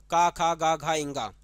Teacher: आती है कंठ से आती है ये आपको ध्यान रखना है जो क वर्ग है यह क वर्ग जो है पूरा का पूरा किसके अंतर्गत आता है कंठ के अंतर्गत आता है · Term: कंठ ध्वनि